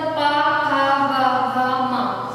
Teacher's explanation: इन वर्णों को बोलते समय हमारे ओठ स्पर्श करते हैं, एक दूसरे को छूते हैं, उनको ओष्ठ वर्ण कहते हैं, मतलब इनको बोलने के लिए जीवा की सहायता, ओष्ठ की सहायता ली जाती है।